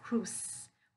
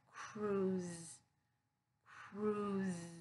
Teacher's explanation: that s sound it's gonna be voiced so it's gonna be that z voice sound